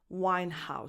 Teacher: because the last name is made up of 2 words put together, the H is strong. Winehouse. So you have to pronounce that H.